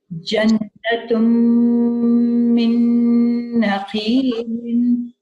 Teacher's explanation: So you will nasalize the noon for 2 counts. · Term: half idghams